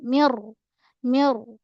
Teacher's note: Nun bertemu dengan ra kat sini idgham bila ghunnah. Masuk terus nun tu ke dalam ra tanpa dengung. Menekan pada ro sebab ada saddu.